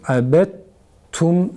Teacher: Sonra daldan ta'ya çevrilen ta'yı tum zamirindeki ta'da idgam ediyoruz. Abet tum, sanki şeddeli bir tane ta varmış gibi abet tum şeklinde okuyoruz